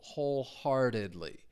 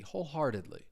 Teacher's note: Stress is on that first syllable, wholeheartedly.